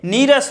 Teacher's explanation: लेकिन इसी के साथ एक नया चेंज आएगा कि ई जो है बड़ी ई में बदल जाएगा। जो ह्रस्व ई है वो दीर्घ ई हो जाएगा